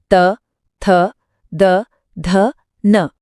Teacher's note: दंत्य वर्ण नाम से ही पता चल रहा है दंत्य यानी दांत। इनको बोलते समय जीभ की नोक सीधा ऊपर वाले दांतों को छूती है। पूरा त वर्ग इसमें आता है।